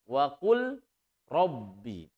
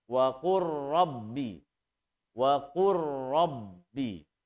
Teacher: membacanya lam lebur ke huruf ro. Sehingga membacanya wa qur rabbi, langsung ke huruf ro. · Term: idgham mutaqaribain